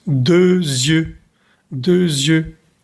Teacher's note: Hacemos la liaison entre dos y la palabra ojos.